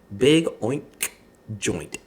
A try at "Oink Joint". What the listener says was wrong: Oink Joint. You put a big K on the end of oink.